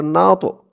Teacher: হামজা নুন জবর আন নুন দিয়ে আবার এই ত কে ধরবে ত টা হচ্ছে কলকলার হরফ ধাক্কা দিয়ে পড়তে হবে